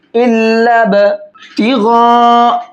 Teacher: ये मद्द मुत्तसिल है, बड़ा मद है, इसको 4 से 5 अलिफ के बराबर खींचेंगे